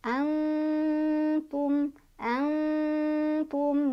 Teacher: Jadi cara bacanya disamarkan sambil berdengung. Jadi nun sukunnya dibaca samar sambil berdengung. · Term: ikhfa aqrob